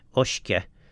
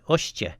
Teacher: In Irish and Scottish Gaelic, that would be ushkia with a k. In Manx, we change the k sound into a t sound, so ushkia becomes ushtia, and in some cases we didn't quite do it everywhere.